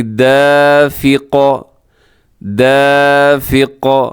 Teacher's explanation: اور وقف کریں گے تو ہم یہاں پر قاف پر قلقلہ بھی کریں گے ، یعنی دافق، دافق، شاہدن، اور وقف کریں گے تو شاہد،